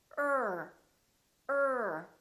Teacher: This sound is produced with the uh sound, the very short uh neutral sound plus the er. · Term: the er sound